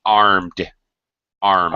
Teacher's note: a little pronunciation armed armed arm arm and yes armed the D no extra syllable no extra vowel sound armed and that sound is D or t d armed armed